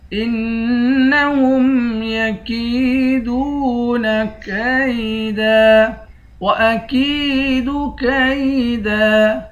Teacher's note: کاف کو یا سے ملا کر یا کو ایک الف کی مقدار کھینچ کر پڑھیں گے